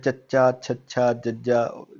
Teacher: ਫਿਰ ਚੱਚਾ, ਛੱਛਾ, ਜੱਜਾ ਜਦੋਂ ਤੁਸੀਂ ਬੋਲੋਗੇ ਤਾਂ ਤੁਹਾਡੀ ਜਿਹੜੀ ਜੀਭ ਹੈ, ਟੰਗ ਹੈ ਜਿਹੜੀ ਉਹ ਤਾਲਵੇ ਨਾਲ ਮਤਲਬ ਉੱਪਰ ਵਾਲੇ ਪਾਰਟ ਨਾਲ ਮਾਊਥ ਦੇ ਉਹ ਟੱਚ ਹੋ ਰਹੀ